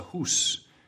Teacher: the vowel sound in a word like house started off as oo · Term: Great Vowel Shift